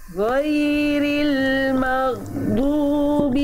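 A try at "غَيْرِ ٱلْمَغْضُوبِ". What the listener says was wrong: Alirkan ghain sukunnya Bunda. Ain suku ghain kok ain sih? Ghainnya ghain sukunnya yang ini Bunda dialirkan.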